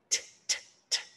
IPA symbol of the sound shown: t